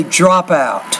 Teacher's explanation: The last sound is a P, the first sound is a vowel, so say drop out.